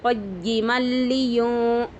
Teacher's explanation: تو قیمل لام زیر لی قیمل لی، یا نون پیش یوں قیمل لیوں، یا پر پیش ہے، نون ساکن کے بعد حرف اخفا میں سے ذال ہے تو اخفا ہوگا